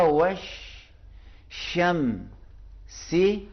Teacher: وش direct واو کا زبر جا کے شین سے ملے گا